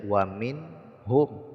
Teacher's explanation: Izhar itu artinya jelas, maksudnya membaca nun sukunnya dengan jelas tanpa didengungkan, ya. Jadi cukup dibaca wa min hum, nunnya dibaca dengan jelas, tidak boleh dengung.